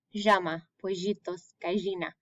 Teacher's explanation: In some countries, instead of the y, their accent, it makes a j sound.